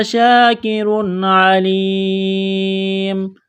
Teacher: تنوین کے بعد یہاں پر عین ہے، حروف حلقی ہے تو تنوین پر غنہ نہیں کریں گے، آواز ناک میں نہیں چھپائیں گے